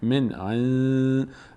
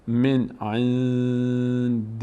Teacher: این نون دوم از بینی ادا میشه و انگار مکس هم میشه روش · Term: اخفا